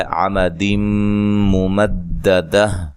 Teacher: یہاں نون تنوین کا ادغام ہے مع الغنہ